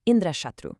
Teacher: He accidentally threw the accent onto the first part of the word